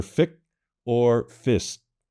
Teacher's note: you drop one or the other of the two consonants in the cluster. Fix becomes either fic or fist, which are difficult for an English speaker to understand what you're trying to say.